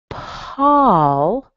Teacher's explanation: That might surprise you because an AU, especially on the West Coast where I live, it sounds like ah. It doesn't sound like anything like an O or an ow. It's ah. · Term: ah sound